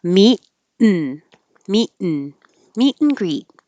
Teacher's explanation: You're also not going to hear the T at the end of meet because meet and greet gets shortened to just the N noise.